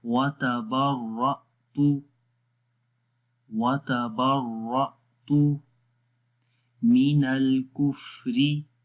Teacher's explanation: جب بھی حمزہ کے اوپر جزم آتی ہے وہاں وہ جھٹکا دے کر پڑھتے ہیں۔